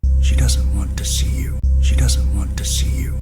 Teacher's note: Mas percebe o seguinte, nessa parte que a gente fez o want to, o doesn't, o T do doesn't, também sumiu, também não foi pronunciado, nem com wanna e nem com want to. Percebe de novo que você não vai ouvir o doesn't, você não vai ouvir o T do doesn't. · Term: redução fonética